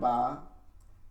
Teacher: দুই ঠোঁটের ভিজা জায়গা ভিতরের দিকে উচ্চারণ করে